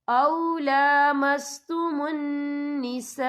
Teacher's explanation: او لامستم النساء، یہ دیکھیں او لامستم النساء، یہاں خالص سے پہلے زبر ہے اور اس پر مد بھی ہے، یہ مد جو ہے مد متصل ہے، اس کی مقدار 4 حرکت کے برابر ہے، تو ہم اسے 4 حرکت کے برابر کھینچ کے پڑھیں گے